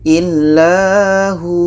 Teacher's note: maka hu ini dibaca panjang. Panjang karena ada waw mati sebelumnya baris di depan.